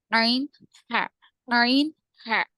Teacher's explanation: وسط الحلق، حلق کا درمیانی حصہ جسے ہم کہتے ہیں وہ ہے عین ہا، عین ہا.